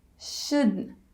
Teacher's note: So the negative is should not have. So instead of not, just make the N sound. Shouldn't. And instead of have, just make the schwa sound.